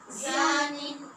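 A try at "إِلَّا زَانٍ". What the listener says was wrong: आपका मखरज ज़ा का ठीक नहीं हो रहा, इल्ला ज़ानिन,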